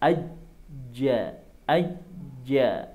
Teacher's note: itu kan terasa lidah bagian tengah naik.